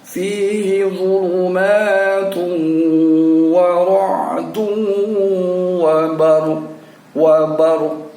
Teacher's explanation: Kita tetap mematikan wa barq, tapi pada ujungnya suara q-nya itu kita yang bisa mendengarnya sendiri dengan bunyi wa barq. Jadi suara qafnya itu membentuk di dalam rongga mulut kita, tetapi tidak kita ucapkan karena dalam posisi disukunkan atau dalam posisi dimatikan dan diikuti oleh tanda wakaf.